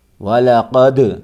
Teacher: آواز ٹکر کھا کے الگ ہوگی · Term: قلقلہ